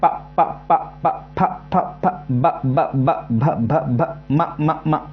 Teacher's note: तो जितने भी आप इनको बोलोगे ना तो सिर्फ आपको क्या होगा सिर्फ होट की ही आवश्यकता पड़ेगी आपको किसी और की आवश्यकता नहीं पड़ेगी तो उसको बोलेंगे ओस्ट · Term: प वर्ग